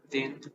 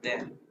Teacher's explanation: Then, thin is it's unvoiced without vibration, and then it's voiced with vibration. The way to pronounce it is first the tongue behind the upper teeth.